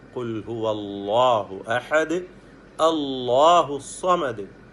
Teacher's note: അല്ലാഹു എന്ന് പറയുന്ന ആ ശബ്ദത്തിന് ഒരു തഫ്ഖീമും കൂടി ചേരുന്നു